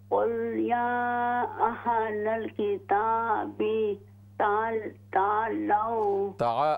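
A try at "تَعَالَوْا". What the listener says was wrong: आइन के साथ अलिफ को लंबा करें, तालौ, तालौ,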